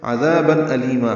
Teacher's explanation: عین وسط حلق سے ادا کریں گے، دال کو نرمی سے پڑھیں گے اور الف مدہ ہے، تنوین کے بعد حمزہ آنے کی وجہ سے اظہار ہے.